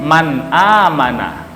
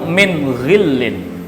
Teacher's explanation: kita harus membaca secara jelas nun matinya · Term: Idhar